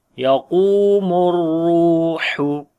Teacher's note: qaf we read in heavy sound and also we long due to waw madda. Ra we read in heavy sound and also we long due to waw madda.